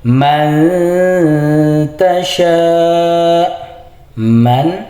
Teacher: Man di sini nun mati ketemu ta dibaca ikhfa yaitu dibaca samar. Nun matinya disamarkan ke ta sambil didengung atau ditahan dua harakat.